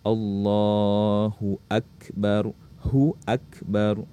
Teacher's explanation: saat mengucapkan takbiratul ihram, ba-nya jangan dipanjangkan